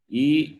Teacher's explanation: it is pronounced on the palette therefore it is called palatal